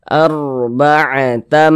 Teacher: Sebelumnya ini ada harokat fathah, maka huruf ra sukunnya dibaca tebal, dibaca tafkhim. Kita tebalkan huruf ra-nya sehingga pangkal lisan kita naik terangkat ke atas ketika kita mengucapkannya.